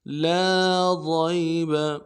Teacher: لام کو کھینچنا ہے ایک الف مقدار میں، ہم نہیں کھینچ رہے ہوتے تو ایک الف مقدار میں لام کو کھینچنا ہے۔